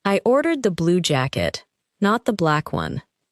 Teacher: The strongest words are blue and black because the speaker is correcting a detail. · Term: sentence stress